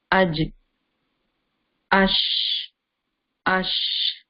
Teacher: Your tongue is touching, the middle part of tongue is touching the roof